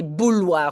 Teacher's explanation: We here in Belgium we say bouilloire, we say the L.